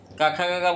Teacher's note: क ख ग बोला जाता है कंठ से